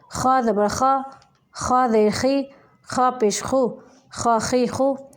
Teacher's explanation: ये जो हैं ये अदनाई हलक से निकलते हैं दोनों, यानी हलक का वो हिस्सा जो मुँह की जानिब है वहाँ से